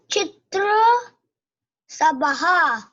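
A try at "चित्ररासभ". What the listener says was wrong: It's not Chitra Sabha, it's Chitra Rasabaha. Chitra Rasabaha. It's not O sound. Yeah, so Chitra and then Rasabaha.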